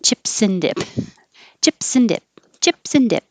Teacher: You can just make the in noise, but the S will connect to the N and sound like sin